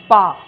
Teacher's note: जैसे ये है, देखिए पा, तो पा में क्या हो रहा है, हमारे दोनों होंठ मिल रहे हैं, तो आप कह सकते हो कि पा का उच्चारण स्थान होंठ है। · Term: ओष्ठ